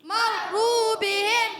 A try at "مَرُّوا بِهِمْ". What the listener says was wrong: میم پر زبر ہے، اس کو کھینچنا نہیں ہے. مرو را پر پیش ہے اور تشدید ہے، ذرا رک کر ادا کریں گے.